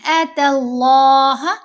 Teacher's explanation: لفظ اللہ کی لام کو ہم نے یہاں پر موٹا پڑھنا ہے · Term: لام جلالیہ